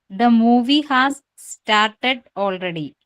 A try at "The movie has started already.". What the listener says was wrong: Oh, very good.